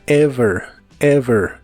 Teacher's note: Usaremos la palabra ever, que significa alguna vez. La V es labio dental.